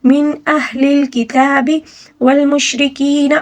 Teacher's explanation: را کو باریک پڑھنا ہوگا کیونکہ را کے نیچے زیر ہے